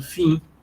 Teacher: A gente não pronuncia esse M final. O que a gente faz é nasalizar a vogal anterior.